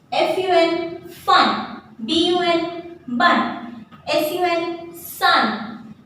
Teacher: If you listen carefully, the A sound is coming again and again in the vowel U.